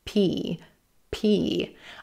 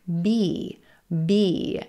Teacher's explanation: is a aspirated or what I call an airpuff consonant and you want to make sure that you have that little puff of air PP I can feel it on my hand as I pronounce